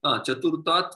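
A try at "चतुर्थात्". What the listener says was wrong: Except you, the one thing I will correct is the pronunciation. Chaturthat. Make it mahaprana.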